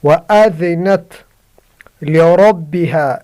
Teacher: را کو موٹا کرنا، را پر زبر ہے، اگر را پر زبر یا پیش ہو تو را پر ہوگی۔